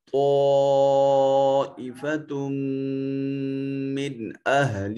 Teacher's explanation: تو اس نون کو اس میم سے ملائیں گے، نون تنوین کو، تو ادغام بالغنہ ہوگا